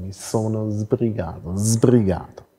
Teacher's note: Das ist ein stimmhaftes S am Anfang. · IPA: [mi̞ ˈsono̞ zbri̞ˈgaːto̞]